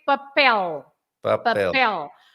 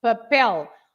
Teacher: because the last letter is an L. You have to stress the last part, papel.